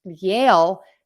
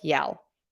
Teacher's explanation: Yale does not sound like yell. Yale has that long A and your mouth moves. Yell has the short E and your mouth does not move.